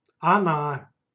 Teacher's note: And pay attention to letter O. In speech, it's pronounced like a. Она. You can see the stress goes to the last vowel.